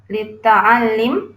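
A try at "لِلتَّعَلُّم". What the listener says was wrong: Litta'allum. Itu pakai U. Ya, litta'allum.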